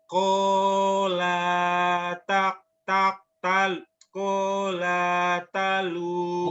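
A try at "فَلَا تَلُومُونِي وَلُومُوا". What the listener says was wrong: bukan kola, fala. Fala talumuni walumu. Fala talumuni walumu.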